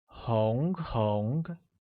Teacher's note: Red translates as 红, which is pronounced with a mid-rising tone on O